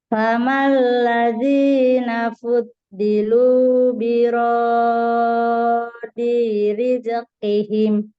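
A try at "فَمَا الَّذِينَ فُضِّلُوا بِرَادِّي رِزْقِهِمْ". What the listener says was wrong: Kurang tasdid Bu. Kurang naber. nabernya. Iya, kurang. kepanjangan. Nah, huruf zai juga sama. Rizqi. Rizqi.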